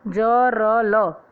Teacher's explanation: वत्स्य व्यंजन यानी दांतों के मूल से